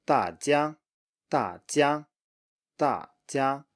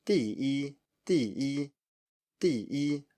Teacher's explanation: Just a straight combination, falling plus high. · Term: fourth tone plus first tone